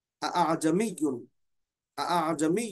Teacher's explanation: دوسرے حمزہ کو بالکل نرمی کے ساتھ یعنی تسہیل کے ساتھ اس کو ادا کریں گے